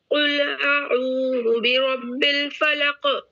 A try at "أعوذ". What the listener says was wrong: اعوذ عین کو اچھے سے پڑھیے اعوذ